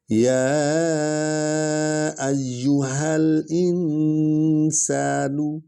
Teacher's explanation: یا کو لمبا کریں کیونکہ اس پر مد ہے، ایو کو اکٹھے پڑھیں کیونکہ یا پر شد ہے، اور ہا جو ہے اسی نے کھڑی سے نکالنی ہے.